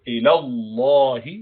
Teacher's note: you make it jalala with full mouth